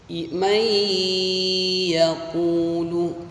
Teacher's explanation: Idgham bi gunnah cara bacanya dibaca mendengung